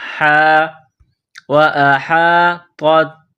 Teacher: ہا گلے کے درمیان سے زور لگا کر ہا کو نکالیں گے۔ ہا، وأحاطت، یہ طوا ہے، اس کو موٹا کرنا ہے، یہ تا ہے، اس کو باریک کرنا ہے۔